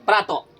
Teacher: अब प्रातः अ के साथ ह के भी आवाज आ रहा है ना। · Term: विसर्ग